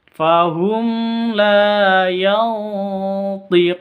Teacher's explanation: nun mati bertemu dengan to. Cara bacanya samar didengungkan, siap-siap ke huruf to-nya karena ini ikhfa hakiki.